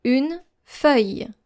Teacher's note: So forget about the L sound and pronounce it Y.